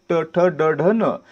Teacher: यांचा उच्चार करताना आपली जीभ आपल्या मूर्धेला स्पर्श करते म्हणजे वरच्या टाळूला स्पर्श करते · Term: मूर्धन्य